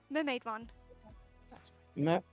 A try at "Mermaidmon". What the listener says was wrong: So there's no D, it's just mermaid.